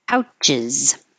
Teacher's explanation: you're going to have to lower your tongue and put it back again, and that little movement will create the uz sound